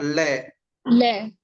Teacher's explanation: हमारे दोनों पार्श्वों से हवा बाहर निकलती है। दोनों के दोनों जो पार्श्व है उनसे हमारी हवा बाहर निकलती है। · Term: पार्श्विक व्यंजन